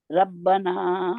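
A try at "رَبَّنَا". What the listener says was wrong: रा को मोटा करें।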